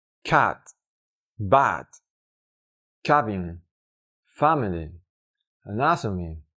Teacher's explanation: se trata de reproducir una a y una e del español combinadas en el tiempo estándar de reproducción de una vocal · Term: ash